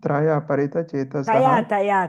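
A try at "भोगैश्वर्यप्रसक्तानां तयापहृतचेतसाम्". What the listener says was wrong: Traya means three, taya. There is no R, Ta, ya, apakrita. Chetasam.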